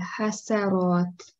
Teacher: So there is no need to round this seen.